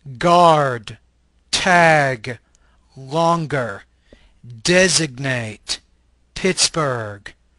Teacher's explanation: This is a velar stop voice consonant.